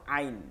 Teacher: গলার মধ্যেখানে কণ্ঠনারী থাকে সেই মাঝখান থেকে আওয়াজকে চাপ দিয়ে